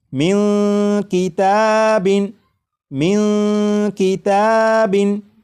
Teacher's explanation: چکا ہے، لہٰذا اس نون ساکن میں اخفا ہوگا، یعنی اس نون ساکن کی آواز کو ناک میں چھپا کر غنہ کر کے پڑھیں گے